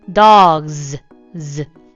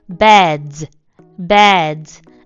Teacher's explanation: 유성음 끝에 오는 애들은 z, z 이런 식으로 발음해줘